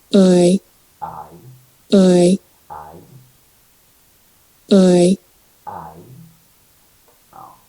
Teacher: The tongue moves from a low back position to a mid-high front position. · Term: diphthong I